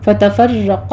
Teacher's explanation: فتفرق میں را مفخم ہے, قاف بھی مفخم ہے